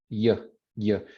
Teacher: the place of articulation moved up to the hard palate, and that's where you get your y sound. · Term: palatalized